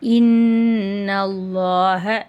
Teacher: இன்னல நூன் மேலே ஷத் இருக்குது. அந்த இடத்துல நம்ம குன்னா செஞ்சு ஓதணும்.